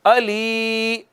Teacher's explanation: علیمم، علیمم، یا ہے ساکن ما قبل مکسور ہے، اس وجہ سے یہ یا مدہ ہے، اس کو ایک الف جتنا کھینچیں گے